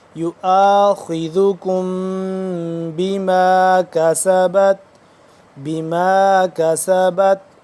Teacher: میم یہاں پہ ساکن اور اس کے بعد آ گیا با تو یہاں پہ ہم اخفا کریں گے